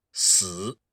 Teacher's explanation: if you were to pronounce that with the third tone, 死, that would mean death